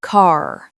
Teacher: In many Irish accents, the 'r' is strong, even at the end of words.